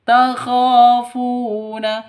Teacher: K panjang dua ketukan karena ada alif diawali dengan fathah mad asli atau mad thabi'i juga.